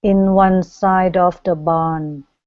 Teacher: you're cutting off the D sliding it over to the next word all the sudden the D jumps out and it makes perfect